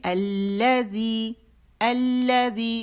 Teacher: لام شمسی نے لام تعریف کو اپنے اندر مرج کر لیا اور لام مشدد ہو گیا, اور لام تعریف یہ والا لکھنے میں غائب ہو گیا.